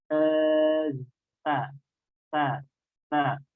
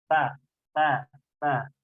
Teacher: Jadi letak keluarnya huruf ta itu adalah di ujung lidah keluar sedikit saja, lalu bertemu dengan ujung gigi seri atas.